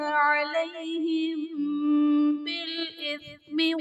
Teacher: علیہم بالإثم میں میم ساکن کے بعد حرف با آ رہا ہے تو یہاں پر اخفاء شفوی کا قاعدہ ہوگا، یعنی میم ساکن میں ہم غنہ کر کے پڑھیں گے